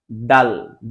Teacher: ডাল বলার সময় আমাদের জিহ্বা উপরের দাঁতের মাড়ির সাথে স্পর্শ করবে এবং স্বয়ংসম্পূর্ণভাবে উচ্চারণ হবে ডাল।